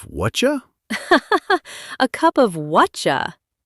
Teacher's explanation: What are you just gets compressed and squeezed until it pops out as whatcha.